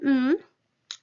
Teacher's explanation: the lips are in contact to close the oral cavity · with an M it's classified as a bilabial nasal